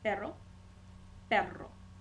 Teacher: it's going to be erre the Double R we have erre you just hold it a little bit longer you gotta roll your tongue a little bit longer